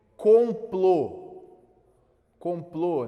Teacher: a tônica está justamente na última sílaba vai ser acentuada como meu o aqui ele é um o fechado · complô termina com o, a tônica está justamente na última sílaba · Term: oxítonas